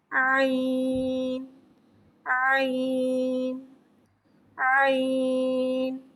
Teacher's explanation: हरकत के बराबर खींच के पढ़ते हैं आईन रफे हलक है हलक के दरमियान वाले हिस्से से अदा होता है आईन को मु खोल के अदा करके पढ़ेंगे आईन आईन आईन · عین کو ایک الف یعنی 3 حرکات کے برابر کھینچ کے پڑھتے ہیں۔ عین حرف حلقیہ ہے، حلق کے درمیان والے حصے سے ادا ہوتا ہے۔ عین کو منہ کھول کے ادا کر کے پڑھیں گے عین عین عین۔